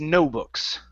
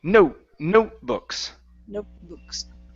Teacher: pronouncing what's called a stop T. A stop T right before a consonant in a word